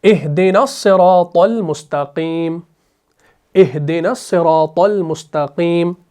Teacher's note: پھر آپ نے پڑھا اہدنا، نون کو صاد سے ملایا، صراط طا کو لام کے ساتھ ملایا۔ یہاں پر نون کو صاد کے ساتھ اس لیے ملایا کیونکہ آپ کا یہ شمسی حرف ہے، یہاں پر لام کے ساتھ ملایا کیونکہ میم آپ کا قمری حرف ہے، ٹھیک ہے؟